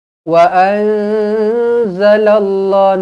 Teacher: Nun kosong bertemu dengan zai. Ikhfa hakiki dengung dua harakat.